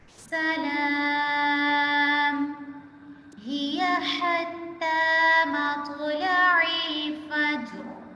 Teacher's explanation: سین کی آواز میں سیٹی کی آواز نکالیں گے